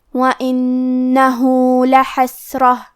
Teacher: حا کی ادائیگی حلق کے درمیان والے حصے سے ہے. پھر یہاں سین ساکن ہے، لہذا ہمیں سین کو ہمزے سے پڑھنا ہے، اور ہمزے کا معنی ہے کہ حرف کی آواز ایسے کمزور ہو کہ اس میں پستی پائی جائے، تو ہم یہ کلمہ کو ایسے پڑھیں گے لحسرتن.